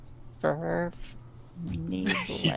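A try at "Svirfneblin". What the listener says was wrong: There is not an R there. It's like you're saying Sven, but you're going Sverf.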